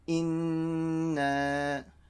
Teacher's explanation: it's a ghunna first because it's a nun mushaddada and then a stretched.